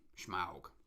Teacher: there is an ever so slightly sh sound in Smaug